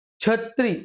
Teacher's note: छ हा जास्त करून य युक्त उच्चारला जातो छ हे जे आपलं वर्ण आहे ते तालव्य स्वरूपात जास्त करून